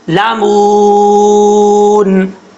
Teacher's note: یہاں پہ واو مدہ ہے، 1 الف کی مقدار لمبا کریں گے